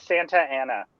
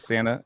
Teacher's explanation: So Californians don't really pronounce their T's. T's, they turn them D's, kind of.